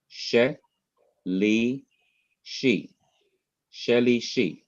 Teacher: normally the accent should be on the last syllable